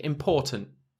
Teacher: It's got that schwa sound just after the T